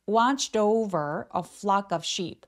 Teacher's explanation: watched에 t가 연음돼서 뒤에 모음이 따라오기 때문에 연결해서 watched over watched over라고 부드럽게 연결해 주세요.